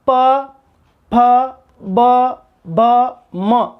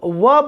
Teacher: जब व बोलेंगे तो होठ तो काम कर रहा है लेकिन पूरी तरह से स्पर्श नहीं करते हैं। माना कि वह का उच्चारण स्थान ओष्ठ है लेकिन पूरी तरह स्पर्श नहीं करता, इसलिए ये स्पर्श व्यंजन कहलाएंगे।